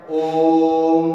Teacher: जैसे हम ओम, तो ये उच्चारण करता है ना ओम का, तो ये जो है प्लुत स्वर के अंतर्गत है, क्योंकि इसकी ध्वनि है लंबी होती है, इसलिए इसका उच्चारण है जो दीर्घ जो स्वर होता है उससे भी ज्यादा लगता है, इसलिए इसे हम प्लुत स्वर कहते हैं।